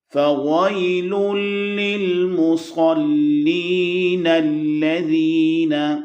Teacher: فَوَيْلٌ لِّلْمُصَلِّينَ الَّذِينَ، صاد للمصلی، صاد کی ادائیگی صحیح کرنی چاہیے، اس کو سین یا تا کی طرح نہ پڑھیں، موٹا کریں۔ حروف مستعلیہ میں سے صاد ہے۔